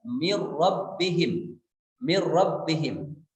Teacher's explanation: Misalnya min rabbihim, ada nun sukun, ke depannya ada ra, maka dibacanya adalah idgham bila gunnah. Dimasukkan bunyi nun sukun kepada ra tanpa disertai dengan gunnah